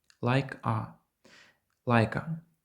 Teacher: звук к в кінці like з'єднується з голосною А